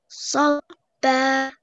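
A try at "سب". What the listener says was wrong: If it's not long, there is no long vowel, don't say Sabba. Just Sabba. Sabba.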